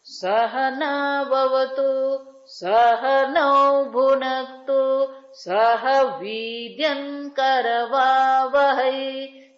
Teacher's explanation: સહના વવતુ બોલીએ એ પણ આપણે સ્વર સાથે બોલીએ. સમાં પહેલો અ જે છે એનું શું છે? એ અનુદાત છે, નીચો છે.